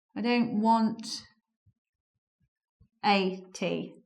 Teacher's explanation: The A joins want and becomes wanna. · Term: elision